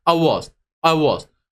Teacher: bir stres kuralı var bir vurgulama kuralı var ne yapıyorum Aslında I was ifadesinde Ben burada çok fazla vurgu yapmıyorum direkt hızlı geçiyorum